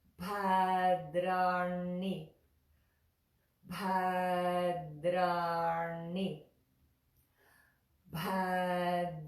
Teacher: That tongue in the little cave in the top of our mouth for ra, and na.